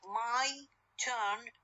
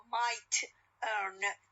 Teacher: My turn t is aspirated one, but when it comes at the end of the word might, no, it is unaspirated. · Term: aspirated t